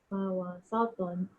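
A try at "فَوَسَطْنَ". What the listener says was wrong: To dah betul tapi sin jadi sod pula. Fawasato. Sato. Sa. Dia senyum lebih. Fawasato.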